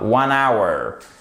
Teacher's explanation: heure en anglais, ça se dit hour et le H ne se prononce pas. 1 hour. Ça se prononce exactement comme notre.